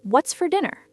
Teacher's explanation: The word for isn't pronounced with a strong or sound, like in the number 4. It's reduced to a weak sound, almost like fur.